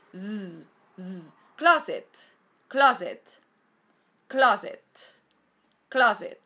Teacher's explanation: a y después la segunda y última sílaba es Z Z fijaos que es s Sonora y no sorda es decir es Z y no s Z Z closet closet